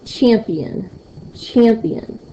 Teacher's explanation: do you hear me saying more of an emphasis on the champ for the P for the end champion you'll hear me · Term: first stress syllable